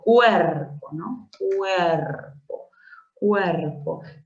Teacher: tengo que la vocal cerrada u y la vocal abierta e forman parte de una misma sílaba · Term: diptongo